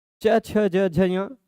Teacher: दांत से जस्ट ऊपर जीभ टच हो रही है, उस जगह को कहा जाता है तालु। ठीक है, तो इनका उच्चारण स्थान तालु है।